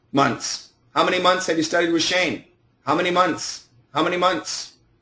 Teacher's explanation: how many months there's no th